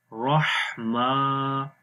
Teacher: جائے گا، بسم اللہ، اب را کو موٹا پڑھیں گے اور ہا کی آواز گلے کے درمیان والے حصے سے آئے گی